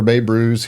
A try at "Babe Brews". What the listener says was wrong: And it's actually not Bay Brews, BAY. It's Babe. Brews.